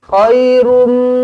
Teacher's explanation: Terus dirapatkan bibir. Khairum, terus rapatkan bibir, dengungkan dengan 2 harakat. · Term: idgham ma'al gunna